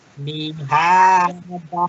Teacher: Da-nya mihada, panjangkan dikit da-nya. Mihada.